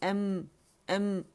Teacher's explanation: یہ حمزہ جو ہے یہ ہمارا الجوف سے نہیں ادا ہوگا بلکہ اقص الحلق سے ادا ہوگا